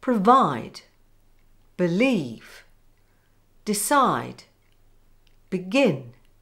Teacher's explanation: Rule number three, two-syllable verbs. These tend to have the stress on the second syllable.